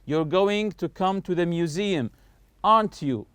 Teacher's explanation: When I say aren't you, notice my voice is going higher here. So, here is just checking for information. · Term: rising intonation, rise up